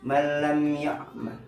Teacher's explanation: Jadi huruf lamnya tidak didengungkan. Nun mati yang melebur ke huruf la, namun huruf lamnya tidak berdengung. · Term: idgham bila gunnah